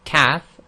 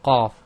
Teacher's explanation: And it's all you have to do to get the sound of the qaf is to just move the tongue a bit back. So if you say kaf and then move the tongue back, you get the qaf.